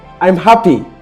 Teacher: Your voice becomes brighter and it increases your tempo. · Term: happy emotion